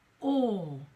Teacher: it's a sort of a diphthong sound which is a longer vowel sound